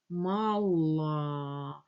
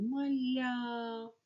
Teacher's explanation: Л твердо розмовляє сердиться твердо А поставили біля неї букву я і буква Л стала м'якою